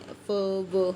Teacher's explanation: Active ਆਰਟੀਕੂਲੇਟਰ ਕਿਹੜੇ ਹੁੰਦੇ ਨੇ, ਆਪਣੇ ਕੋਲ ਲਿਪ ਹੁੰਦਾ ਨਾ, ਤੇ ਪੈਸਿਵ ਦੇ ਵਿੱਚ ਕੀ ਹੁੰਦਾ, ਅਪਰ ਟੀਥ ਹੁੰਦੇ ਆਪਣੇ। ਦ lower lip ਆਰਟੀਕੂਲੇਟਰਸ with the upper teeth, ਜਿਵੇਂ ਫ ਵ ਹੈ ਨਾ, ਤਾਂ ਇਹ ਕੀ ਨੇ, ਲੇਬੀਓ ਡੈਂਟਲ।